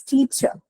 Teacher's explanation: in the actual articulation the last ER is the schwa sound · have t and you have two so in the second part because you have the um right unstressed sound schwa that syllable is definitely not going to take any stress so automatically the stress then goes to the first syllable